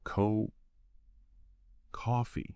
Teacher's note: Then coffee. Stress is on the first syllable.